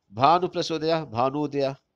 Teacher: छोटा ऊ छोटा ऊ मिलकर के बड़ा ऊ हो गया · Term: दीर्घ स्वर संधि